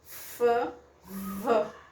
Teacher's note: Eles têm o mesmo ponto de articulação, mas a diferença entre eles é o vozeamento.